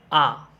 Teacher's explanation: मुख द्वार पूरा मतलब पूर्ण रूप से खुल जाता है। जैसे आप बोलकर देखिए खुद से आ, तो यहाँ पे निकल जा रहा है आ, तो मुंह पूरा खुल रहा है ना, तो यहाँ पे क्या होगा, आपका विपरीत स्वर हो जाएगा।